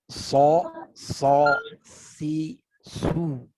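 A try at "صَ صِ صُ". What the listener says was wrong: Nah, masih ada PR. Lidahnya belum digerakkan yang belakang. Harus begini. Fathah semua dulu. Nanti kalau udah berasa naik lidahnya, ya, pangkalnya naik. Belajar ke si. Terus ke su, ya.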